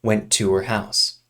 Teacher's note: And we remove the H from the pronoun her.